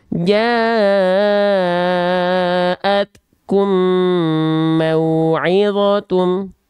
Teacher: Leburkanlah bunyi mim mati yang berwarna merah muda atau pink yang bertemu dengan mim yang bertasydid disertai dengung selama 2 harokat. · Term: idgham mislain